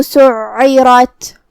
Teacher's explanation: اس پہ تشدید ہے تو 2 حرف کے برابر ہمیں عین کو پڑھنا ہے. جو کہ تشدید زیر کا ہے تو اس کا دھیان رہے. · را کو ہم بھاری آواز میں ادا کریں گے کیونکہ اس پہ زبر ہے تو یہاں را کا حکم ہوا تفخیم. آخر میں تا کو ہمزے سے ادا کرنا ہے